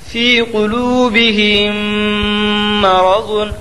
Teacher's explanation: میم ساکن کے بعد میم آیا اس لیے میم کو میم سے ملا کر غنہ کے ساتھ پڑھا جائے گا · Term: ادغام شفوی